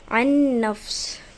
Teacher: تو میں نے نون ساکن کی آواز کو نون میں مرج کر دیا اور میں نے اس کو غنے کے ساتھ بھی پڑھا